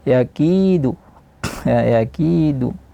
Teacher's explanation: kidu tidak panjang dari satu harakat